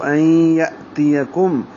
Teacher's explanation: این یا کو حمزہ سے ملائیں گے، حمزہ ساکن جھٹکے سے پڑھا جائے گا